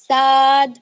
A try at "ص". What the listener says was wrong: صاد کو اور تھوڑا موٹا پڑھیے. صاد. صاد کو اور موٹا. ضاد.